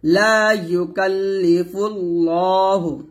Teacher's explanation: ল তে এক টান দিবেন মোটা করবেন